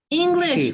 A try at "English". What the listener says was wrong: Sh. Yes, because the sound sh, not ch.